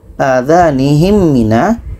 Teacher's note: Adhanihim mina, mim mati bertemu mim, nih mim mati bertemu mim, maka adhanihim mina, mim mati bertemu mim dengung, dan mim tasydid wajibul gunnah.